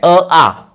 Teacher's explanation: उच्चार एकाचा रस्व आहे एकाचा दीर्घ आहे पण उच्चार स्थान मात्र सारखं आहे